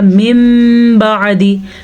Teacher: نون ساکن کے بعد با آیا تو نون میم میں بدل گیا